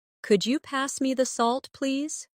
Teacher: Listen to the way my voice rises on could you and falls gently at the end.